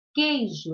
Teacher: Então, aqui eu tenho um dígrafo, é o QU, porque eu falo queijo, eu não pronuncio o U. Senão, ficaria cuejo.